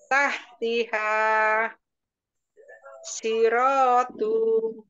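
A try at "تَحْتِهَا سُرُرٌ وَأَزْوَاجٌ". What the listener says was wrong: Nah, tuh-nya kepanjangan. Nah, tuh-nya masih kepanjangan ya.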